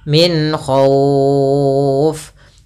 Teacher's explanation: izhar halqi, yaitu suara nunnya kita baca dengan jelas tanpa ditahan. Karena datang setelah huruf nun ada huruf kha, yang dimana kha termasuk huruf yang makhrajnya keluar daripada tenggorokan kita, maka dia harus jelas.